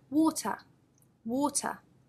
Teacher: we have the schwa sound at the end the lazy vowel sound